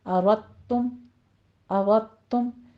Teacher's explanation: ہم مکمل طور پہ اس کو دال کو تا میں مدغم کر دیں گے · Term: ادغام